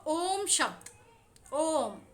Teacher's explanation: ओम ये ह्रस्व और दीर्घ ये दोनों स्वरों के जो वर्ण हैं उनसे भी यह ज़्यादा समय लेता है। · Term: प्लुत स्वर